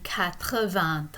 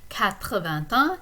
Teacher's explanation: a liaison between the T of 20 and the un that comes after it